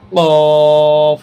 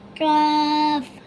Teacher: কফ মোটা করে কাফ পাতলা করে